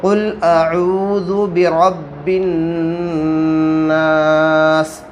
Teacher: یہاں تو ہم قل اعوذ برب الناس بھی پڑھ سکتے تھے، لیکن یہاں ہم رک جائیں گے، تو رکنے کی صورت میں اگر زیر پر وقف کرنا ہو، سین کے نیچے زیر ہے، تو آخری حرف پر ہم جزم دے کر سانس توڑیں گے